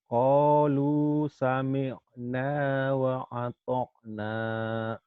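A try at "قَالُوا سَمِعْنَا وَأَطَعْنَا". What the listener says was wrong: Qalu sami'na wa atar'. Ah, bukan wa atok nih ya. Wa atar' wa atar'. Nah, ainnya yang belum mantap ya.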